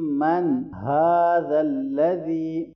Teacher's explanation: نون ساکن کے بعد ہا حرف حلقے میں سے آ رہا ہے تو یہاں ہم اظہار کریں گے